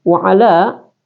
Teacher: Tandanya ada fathah memanjang, kemudian ada tanda di atas yang panjang horizontal. Ini dia ada alif, ada fathah horizontal, ada juga tandanya di atas vertikal, maka dibaca itu sampai 5 harakat ya. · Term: mad jaiz munfasil